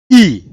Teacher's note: मुख के अग्रभाग से, जिह्वा के यानी कि जीभ के अग्रभाग से निकलती है, आगे। अग्र मतलब अगला या आगे, ठीक। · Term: अग्रस्वर